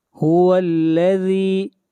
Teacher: ذال کو کھینچ کر پڑھیں گے ایک الف کے برابر، یہاں پر یا مدہ ہے، یا ساکن سے پہلے زیر آ جائے تو ایسی یا کو یا مدہ کہتے ہیں، اور اس کو کھینچ کر پڑھتے ہیں ایک الف کے برابر، اور اس مد کو مد اصلی کہتے ہیں.